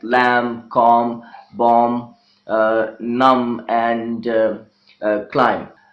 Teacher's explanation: It is a difficult job to pronounce them together. Therefore, for the ease of speaker, the second sound, the B sound, has been eliminated from these words like lamb, calm, bomb, numb, and climb. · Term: B is silent